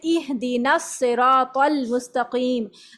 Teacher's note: تو ہم اس میں نون کو صاد سے ملاتے ہیں، طا کو لام سے ملاتے ہیں. اس میں ہم ان دونوں الف کو، حمزہ وصلی کو ہم بیچ میں سے حذف کر دیتے ہیں، اور صرف ہم یہ والے حمزہ وصلی کو باقی رکھتے ہیں کیونکہ ہم اس سے ابتدا کر رہے ہیں.